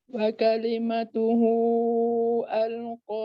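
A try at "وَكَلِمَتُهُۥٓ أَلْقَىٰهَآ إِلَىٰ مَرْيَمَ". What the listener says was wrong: Dia kena 6. Dia kena 6 harakat, bukan 4, 6 harakat.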